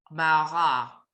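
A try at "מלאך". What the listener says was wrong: No. You've got letters reversed. What's the second syllable? Just read me the second.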